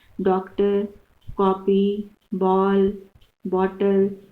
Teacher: अ का उच्चारण करते हैं, थोड़ा सा मुंह खोल करके उसको बोलते हैं। अंग्रेजी भाषा के शब्दों को लिखते समय इसका प्रयोग किया जा सकता है, जैसे डॉक्टर, कॉपी, बॉल, बॉटल, इस तरह का प्रयोग करते हैं ना, थोड़ा सा मुंह को गोल करके बोलते हैं। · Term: आगत ध्वनि